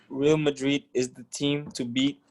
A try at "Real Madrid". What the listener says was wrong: Real Madrid it's in Spanish, so you are not supposed to read it Real Madrid, because that's because your mind is, you are reading English.